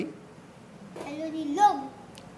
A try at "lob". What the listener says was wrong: G नहीं, LOB है तो लोब।